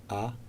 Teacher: this vial anyway what you can see is that the mouth the jaw is open the lips open the lips not spread the tongue is just lying at the bottom it's not shaped